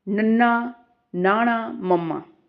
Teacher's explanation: ਇਹਨਾਂ ਦੇ ਉਚਾਰਨ ਸਮੇਂ ਫੇਫੜਿਆਂ ਵਿੱਚੋਂ ਨਿਕਲਣ ਵਾਲੀ ਹਵਾ ਨੱਕ ਦੇ ਰਾਸਤੇ ਬਾਹਰ ਨਿਕਲਦੀ ਹੈ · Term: ਨਾਸਕੀ ਵਿਅੰਜਨ